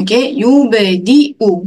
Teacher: Jangan baca panjang pada huruf dal tersebut sebab ya tu tidak berfungsi sebagai mad dekat situ. Dia jadi rumah kepada Hamzah. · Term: satu harakat